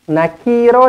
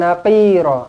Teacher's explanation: Jangan nakira. Kalau naki, nanti huruf qaf ni bertukar jadi kaf pula. Tak boleh. Ini qaf, huruf qaf bukan huruf kaf.